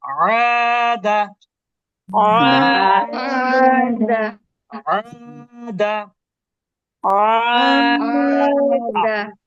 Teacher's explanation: আইন কণ্ঠ গলার মধ্যভাগ থেকে